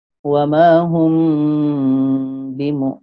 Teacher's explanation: Apa yang samar tu? Mim mati ketika kita baca seolah-olah dah masuk ada bunyi ba · Wa ma hum bimu. Mim tu dia tak sempurna lagi bunyinya dan pun mim ni dah seolah-olah disambut oleh bunyi ba. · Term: ikhfa syafawi